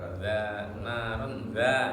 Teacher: tanwin ketemu zal jadi bacaannya ihfa nggak dibaca dua harokat langsung saja naron Zanya yang 2 harakat.